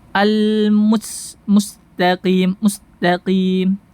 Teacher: Mus Mus Mus maka akan tebal bunyinya ya seperti itu kemudian menghilangkan rakhawa mengalirnya suara dan saofir suara yang tajam pada huruf Sin ya Al Mustaqim Mustaqim tajam suaranya Mus mengalir juga suaranya ya